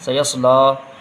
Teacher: پہلے سین کی آواز نکلے گی، پھر صاد کی آواز، سین کی آواز باریک ہوتی ہے، صاد کی آواز موٹی ہوتی ہے، لام میں کھڑا زبر ہے، تھوڑا کھینچ کے پڑھیں گے۔